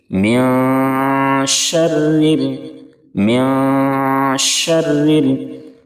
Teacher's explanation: شین کو بلند سیٹی جیسی آواز نکال کر کے سختی کے ساتھ پڑھیں گے · نون کی آواز کو ناک میں چھپا کر غنہ کے ساتھ پڑھیں گے، اور اخفا کرتے ہوئے آپ یاد رکھیں گے کہ زبان تالو سے نہ لگے۔